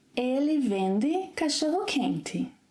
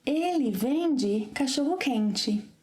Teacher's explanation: when the letter E is unstressed and it's at the end of a word, in some dialects, it's pronounced as I, as in movie.